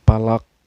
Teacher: Dan qalqalah di sini qalqalahnya qalqalah kubro atau qalqalah besar ya. Berarti pantulannya besar.